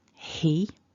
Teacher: we want a little bit of a h there and then the long e